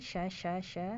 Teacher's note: sya juga tengah lidahnya naik, walaupun nggak nempel, sya ya, walaupun nggak nempel ke langit-langit ya.